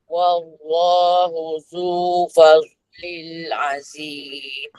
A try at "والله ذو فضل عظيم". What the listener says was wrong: Yang ni bukan fadlil, fadlin, lin. Okay, ulang balik.